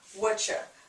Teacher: So we're just dropping the U, dropping the R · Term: informal contraction